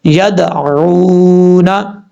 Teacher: واو ساکن سے پہلے پیش ہے تو وہ مدہ ہوگا، 1 الف کی مقدار لمبا کر کے پڑھیں گے